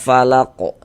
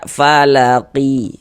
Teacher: Kalau berwakaf di huruf qafnya kita sukunkan, kita matikan.